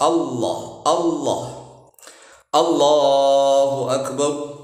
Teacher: Yang fasih itu kan lam tafkhim itu Allahu Akbar. Jadi ujung lidah itu nempel di langit-langit gigi atas yang paling depan. Begitu. Enggak usah ditekuk, enggak usah di ee tekuk ya.